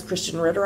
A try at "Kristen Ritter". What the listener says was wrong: Kristen Ritter. It sounded like you said Christian.